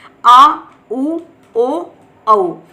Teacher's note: और तीसरा आता है हमारा पश्च स्वर, यानी पीछे का भाग जो होता है जीवा का। पश्च स्वर उच्चारण में जीवा का पश्च भाग यानी पीछे का भाग उठता है।